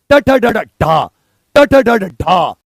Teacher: मूर्धन्य में आपकी जीभ टक से ऊपर जाएगी।